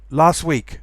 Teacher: So if there's a consonant following, you normally elide the t sound.